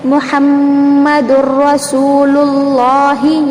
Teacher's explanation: یہاں پر محمد میم جو درمیان میں ہے نا یہ میم مشدد ہے اس لیے غنہ ہو رہا ہے، یہ ادغام کا غنہ نہیں ہے.